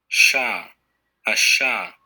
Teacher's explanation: voiceless palatal alveolar fricative